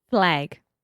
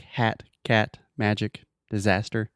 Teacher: it's very open and front sound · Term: the a sound